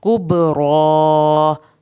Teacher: काफ को पतला पढ़ना है, बा पे कलकला होगा, कुबरा, रो को पुर करके पढ़ना है और खड़ी ज़बर को आपने खींचना है।